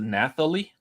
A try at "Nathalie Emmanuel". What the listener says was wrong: I don't think you pronounce the H. I don't think anyone's name is Nathalie.